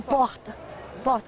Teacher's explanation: É quase um H. É um som quase de H. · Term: R gutural